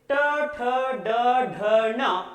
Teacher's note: इन व्यंजनों को उच्चारण करते समय हमारी जो जीभ है वह दोसे की तरह पीछे की ओर घूम जाती है, इसलिए इन्हें मूर्धन्य कहा जाता है।